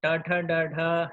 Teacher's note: ट वर्ग के अक्षरों का मूर्धा है